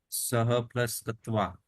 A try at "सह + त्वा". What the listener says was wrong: तत्वा नहीं, त्वा ही पढ़ते, वो को आधा है तो उसको पढ़ने में नहीं आ पाता, फिर त्वा ही पढ़ो उसका, है ना।